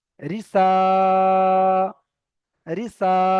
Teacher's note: খাড়া যাবার থাকলে একালি পরিমাণ টান দিয়ে পড়তে হয়, তাহলে আমাকে এখানে একালি পরিমাণ টান করতে হবে।